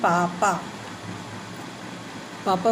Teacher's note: पापा बोलने में देखिए आपके दोनों लिप्स आपस में टच करते हैं। अगर इन्होंने टच नहीं किया तो आप नहीं बोल सकते।